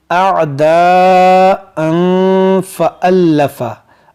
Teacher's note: यहाँ पर भी लोग गलतियाँ कर जाते हैं, इसको पढ़ते हैं आदान, इन आइन को सही से अदा नहीं करते हैं। तो यहाँ पर देखिए हमज़ा आइन ज़बर आ, इस तरह से अअदाअन फ़अल्लफ़ा।